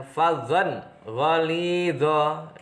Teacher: idhar halqi karena ada tanwin bertemu dengan ghin, cara membacanya harus jelas